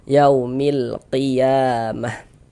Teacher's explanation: Izhar qamari. Jadi, huruf lamnya itu dibaca jelas, dibaca terang